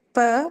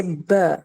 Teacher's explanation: when you say p and when you say B right when as you say B you will see a stronger vibration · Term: voiced